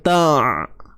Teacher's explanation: Suara ni tidak akan terlepas, tidak akan tertahan. Dia tengah-tengah. Okey, dia tidak terlalu terlepas, dia tidak terlalu tertahan. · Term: sifat tawassut